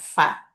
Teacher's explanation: কারণ ফাটাও এমনিতে উচ্চারণ হয়, তারপর নিচের ঠোঁট উপরের দুই দাঁতের আগার সাথে লাগাইয়া, উপরের দুই দাঁতের আগা নিচের ঠোঁটের মানে পেটের সাথে লাগাইয়া